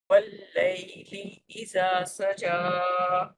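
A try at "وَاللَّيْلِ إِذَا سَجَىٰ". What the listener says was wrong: اذا کی دال نرم نہیں ہے آپ کی.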